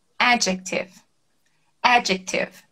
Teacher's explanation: ao invés da sílaba mais forte ser no final, ela é no começo. · essa palavra adjective, longa e com a tônica no começo.